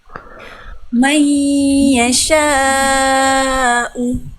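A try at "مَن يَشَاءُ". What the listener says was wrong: Oke, jangan dihentak tuh tapi Bunda. Mai, biasanya. Mai yasha'u.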